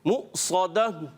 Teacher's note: حمزہ پر جزم آ گئی ہے، سکون آ گیا، ساکن کی علامت. اور صاد کو پر کریں گے، یہ حروف مستعلیہ میں سے موٹے حروف میں سے ایکسٹرا موٹے